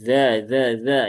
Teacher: ujung lidah di gigi seri atas ya bersama dengan huruf yang lain